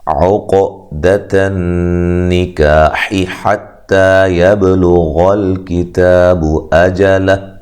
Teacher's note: قاف کو موٹا ادا کرنا ہے، قلقلہ کرنا ہے، نون مشدد پہ غنہ کرنا ہے، کا الف مدہ ہے، حتی دونوں ہا کو واضح کر کے ادا کرنا، ایک ہی حرف ہے، 2 مرتبہ آ رہا ہے، زیر اور زبر کے ساتھ.